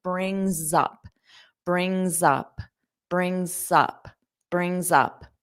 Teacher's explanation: You can have a little bit of a Z sound before up to help you connect.